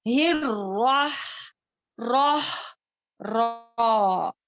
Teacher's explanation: अपनी जुबान की नोक को जो है, जब ऊपर के जो दांतों के पीछे गमपट है वहां पर थोड़ी देर के लिए कांटेक्ट में रहना है, यानी कि हिर, राह, राह, रा, और हा है, हाँ, इस ये रा को मोटा पढ़ना है।